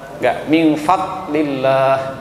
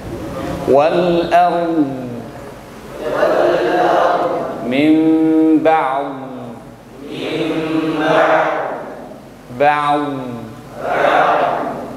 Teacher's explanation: karena sifat istitolah itulah dhad memiliki sifat rokhawah, yaitu mengalir suaranya, tidak terkunci.